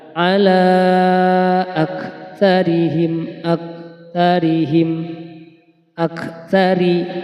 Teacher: Nah, ini adalah ro tarkik ya. Nah, ro yang bertanda baca kasroh dibaca tipis